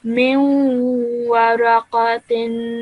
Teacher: So what you did there was you produced a 2-second nasal sound whilst joining the meme to the waw